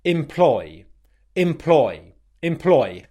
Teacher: the first syllable is unstressed and the second syllable is stressed